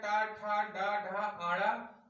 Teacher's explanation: इनका उच्चारण स्थान मूर्धा से है